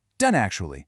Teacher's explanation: The T sound just gets cut off to make a smoother jump to the next word. · You can kind of feel the stop in your throat, but you don't actually hear the T. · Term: stopped T